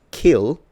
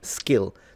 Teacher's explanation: So basically it would be not like the word kill, because that one is aspirated, but like the word skill, which has the same K sound, but without aspiration